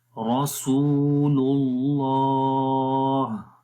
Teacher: آخر میں ہا کی آواز کو، ہا کی جو صفت ہے ہمس والی وہ آ جائے گی، رسول اللہ. لام کو لام کے ساتھ ملائیں گے تو یہ دوسرا لام اللہ کا جو نام ہے یہ موٹا پڑا جائے گا. یہاں پر آپ دیکھیں اللہ کے نام سے پہلے پیش ہے اور پیچھے جو اللہ کا نام پڑا تھا اس سے پہلے زبر تھی، تو جب اللہ کے نام سے پہلے زبر یا پھر پیش آ جائے تو اللہ کا نام موٹا پڑھتے ہیں.